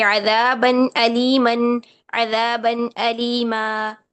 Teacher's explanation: तो नून साकिन या तनवीन के बाद हमजा, हा, आइन, हा, गैन, खा, इन 6 के 6 हरूफ में से कोई भी एक हर्फ आ जाए तो हम इसकी आवाज को, नून की आवाज को जाहिर करके पढ़ते हैं। · एक अलिफ के बराबर में लंबा करके वक्फ किया ना हमने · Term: इजहार